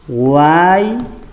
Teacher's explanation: La pronunciación de tres vocales, cerrada, abierta, cerrada, en una sola sílaba. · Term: triptongo